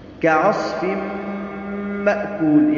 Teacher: کعصف مأکول، یہاں پر بھی ادغام بالغنہ ہے، تنوین ہے اور تنوین کے بعد حروف یرملون میں سے حرف میم آیا ہے جو کہ ادغام بالغنہ کا حرف ہے